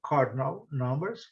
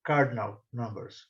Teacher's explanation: Em inglês britânico, eles não pronunciam o R. E no inglês americano eles dão, né, o cardinal, dão uma ênfase no R.